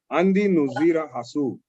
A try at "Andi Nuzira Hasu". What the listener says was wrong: I was with you until you got to the ha part.